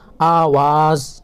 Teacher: آواز میں دیکھیے الف کے اوپر مد ہے، اس کو کھینچ کر پڑھنا ہے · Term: الف مدہ